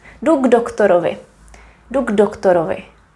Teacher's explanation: When we speak quickly or normal speed and there is K, you don't really hear it that much.